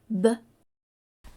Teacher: you put your lips together and make your lips pop your voice is turned on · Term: B sound